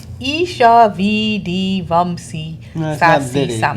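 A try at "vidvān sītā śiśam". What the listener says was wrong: It's not Vidi. It's 3 words. Vidvam Sita Shisham. Vidvam Sita Shisham. Vidvam Sita Shisham.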